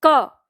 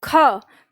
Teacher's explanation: का की तुलना में ख बोलने में ज्यादा हवा लगती है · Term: महाप्राण